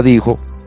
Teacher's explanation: la palabra dijo tiene el acento en la penúltima sílaba, por lo tanto es grave